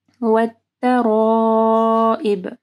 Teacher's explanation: ترائب میں مد کو لمبا کرنا ہے، اس کے بعد حمزہ ہے تو 4 سے 5 حرکات کے برابر اس کو لمبا کرنا ہے